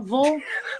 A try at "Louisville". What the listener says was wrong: No, it's an L. There's an L in there, like lullaby. It's like lullaby.